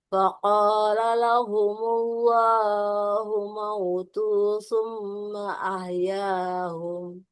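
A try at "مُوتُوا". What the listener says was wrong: Bukan mau tuh, mutu. Humutu, bukan mau tuh.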